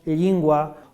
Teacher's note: la palatalización de la l inicial